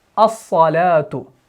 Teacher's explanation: आज़ान में पढ़ते हैं ना अस्सलातु खैरुम मिनन नौम, तो हम इस हमजा को सौद से मिलाते हैं। तो जब हमने सौद को पढ़ा, लाम को इसके अंदर मुदगम कर दिया, सौद के ऊपर चद लगा देते हैं।